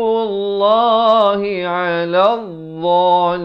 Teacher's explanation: Ala di pertengahan kerongkong